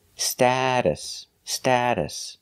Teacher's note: the T in the middle is pronounced like a fast D status status the second syllable is pronounced with a relaxed uh